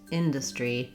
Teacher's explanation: It's probably because we do have the pattern industrial, but in industry, we need first syllable stress.